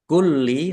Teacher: lamnya ada tasdidnya dibaca dobel ditekan dan ditahan biar tampak dobelnya